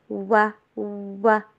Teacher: وا کو انگلش میں جو ڈبلیو ہوتا ہے اس کی ساؤنڈ پہ پڑھیے، وی والی ساؤنڈ کے اوپر نہیں. ہونٹوں کو گول کرنا ہے، مکمل طور پر جوڑنا نہیں ہے، پھر ان کو واپس آہستہ آہستہ کھولتے جانا ہے.